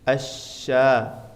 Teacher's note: sifat attafasi menyebar dan ini hanya satu huruf yaitu huruf syin